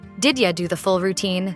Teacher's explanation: That's called assimilation. The D and Y sounds in did you merge, and it becomes did ya